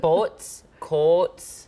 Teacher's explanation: The most prominent feature of the Minnesota accent is that long O, which we all know.